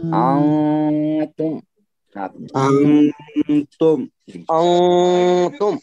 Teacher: اس اخفا کی مقدار جو ہے تقریباً ایک الف تک ہونی چاہیے، بس ایک الف کے برابر